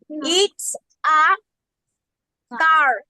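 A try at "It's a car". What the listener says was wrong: ইটস আ খার। খার কি? কার হবে না, কি হবে? খার। খার, ইটস আ খার।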